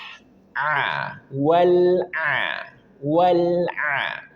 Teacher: Maka sedikit alirkan wal. Kemudian ada huruf ain keluar dari tenggorokan bagian tengah.